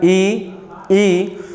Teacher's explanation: तो जो हमारी जिह्वा है ऊपर की तरफ जो है तालु का स्पर्श करती है, तो इनका उच्चारण स्थान हो पाता है। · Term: तालव्य स्वर